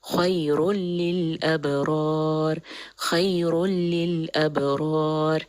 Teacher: تنوین کے بعد لام آ رہا ہے، تو یہاں پہ بھی کمپلیٹ مرجنگ ہے، لیکن یہ ایک ایسی مرجنگ ہے جس میں غنہ باقی نہیں رہتا، بغیر غنہ کے ادغام ہو رہا ہے۔ خیر للابرار، یہاں پہ میں بالکل کوئی غنہ نہیں کروں گی، خیر للابرار، خیر للابرار۔